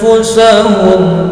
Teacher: mendengung samar panjang 2 harokat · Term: Ifa hakiki